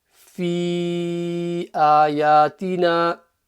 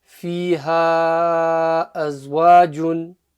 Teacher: So on that noon, the nasal sound, couple of seconds, and then the stretch is for 2 to 3 seconds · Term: mummy mud